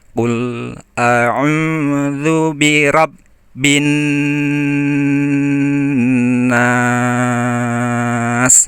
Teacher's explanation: nun bertasdid itu harus didengungkan atau ditahan lama